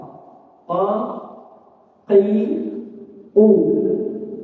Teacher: Bagian paling belakang lidah yang bertemu dengan langit-langit lunak, ya, atau anak tekak, ya, adalah tempat keluarnya huruf qaf